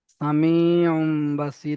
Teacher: তানবিনকে মিমের দ্বারা পরিবর্তন করে এক আলিফ পরিমাণ গুন্না করে পড়তে হবে